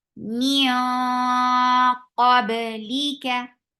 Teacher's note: keep this ikhfa heavy by lifting your tongue up for qaf